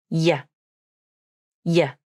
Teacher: The tongue is in a wide shape, and the middle of the tongue arches up towards the palate. The sides of the tongue push against the inside of the upper molars. · There is tension in the middle part of the tongue as the tongue pushes forward. The y consonant is a voiced consonant, which means the vocal cords are turned on as you say it. There is secondary vibration in the throat as the base of the tongue tenses. · The sides of the tongue push against the inside of the upper molars. The tongue tip is down. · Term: y consonant sound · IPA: /j/